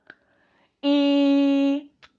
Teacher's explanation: es una vocal cerrada estoy cerrando la mandíbula